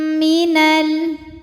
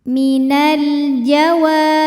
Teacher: karena alif lam menghadapi huruf qamariyah yaitu jim, maka lam sukun kita bunyikan dengan jelas atau biasa disebut dengan idhar qamari.